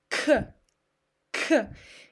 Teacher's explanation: my tongue is very far away from my teeth and I'm touching somewhere here. I'm touching my palate. And here, pay attention on the throat. · So here, how we pronounce it. You need to move your tongue backward and touch your upper palate, but in the back on your mouth. · pay attention on the throat. You don't engage your vocal cords.